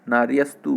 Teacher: ये नार्यः का विसर्ग का स हो जाता है